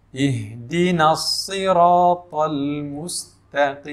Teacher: Sad ini hurufnya tebal, sehingga ketika kita baca ihdinas siratal mustaqim, ra dibaca tebal, ta juga dibaca tebal. Ihdinas siratal mustaqim, sin, ya, setelah huruf mim tadi, mus, itu sinnya tipis.